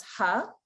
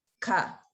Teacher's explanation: if you notice the ha the throat is more open it's a softer sound